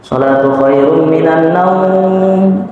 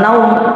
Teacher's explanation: kalau as-shalatu khairun minan naum itu naumnya panjang ya, Pak ya. Bukan pendek.